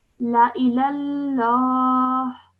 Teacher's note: So instead of saying la ilallahi, I'm going to say la ilallah with a slight h sound at the end